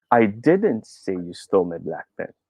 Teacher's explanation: i try to put the stress on the second second word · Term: emphasis